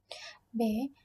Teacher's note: bunyi B sebelum diucapkan itu ada udara dihambat dulu oleh bibir. B, kalau bibirnya dikatup, maka B tidak terbentuk.